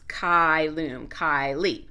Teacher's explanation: Classical Latin, the C is like k, cat, and this is a diphthong